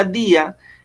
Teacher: está nombrando una vocal cerrada con acento y una vocal abierta sin acento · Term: hiato